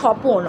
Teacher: স্বপ্নটাকে আমরা যখন ভেঙে দিচ্ছি ওখানে স্বরের আগম হচ্ছে নতুন স্বর আসছে